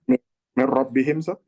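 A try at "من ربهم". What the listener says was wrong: Ya, min Rabbihim kalau disambung ya, benar. Ahsan ya.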